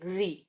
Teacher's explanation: ये री, आपकी जबान पलट रही है, ऊपर लग रही है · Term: मूर्धा